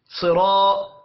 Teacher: علی لام کے اوپر کھڑی زبر ہے، ایک الف کے برابر کھینچ کر پڑھیں گے۔ صرا صاد کو موٹا پڑھنا ہے، را کو بھی موٹا پڑھیں گے کیونکہ را کے اوپر زبر آ رہی ہے۔ اور یہاں پر دیکھیں الف سے پہلے زبر ہے، الف مدہ پڑھا جائے گا۔